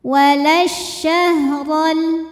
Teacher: Walas ada alif lam syamsiyah. Karena alif lam menghadapi huruf syamsiyah yaitu syim. Maka alif lam tidak dibaca. · Huruf ro dibunyikan secara tafkhim karena berbaris fathah maka dibacanya tebal.